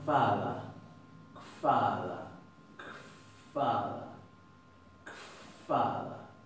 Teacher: No se va a pronunciar vada ni vada, kfada, como si le pusiéramos una KF adelante y la F suavecita, casi mezclándola con un sonido más original de la V.